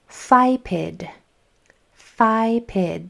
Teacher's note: That first sound is made with my top teeth going over my bottom lip. And then I, p, I, d.